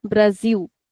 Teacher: So the sound of this S is like a Z only.